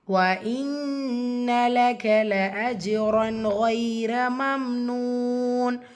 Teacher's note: இன்ன நூன் முஷத்ததா குன்னா செஞ்சு ஓதணும்.